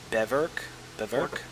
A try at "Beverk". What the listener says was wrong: Beverk, yeah. Beverk. It's not Beaverk, it's Beverk.